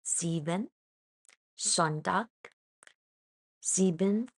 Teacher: But in German, at the start, it makes the Z sound